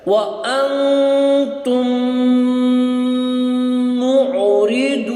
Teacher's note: ہے، تو اس کو ہم ایک کر کے پڑھیں گے، اور یہاں پر انتم پہ غنہ ہوگا اور میم پہ جو ہے وہ اخفا ہوگا ، وَأَنْتُمْ مُعْرِضُونَ۔ وَإِذْ أَخَذْنَا پہلے بھی ابھی گزر چکا ہے،